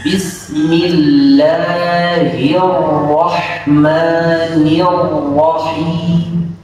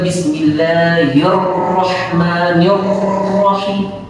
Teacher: takrir ra itu di dalam, disamarkan dengan dikuatkan penempelan atasnya ujung lidah ke langit-langit, gusi dari gigi seri atas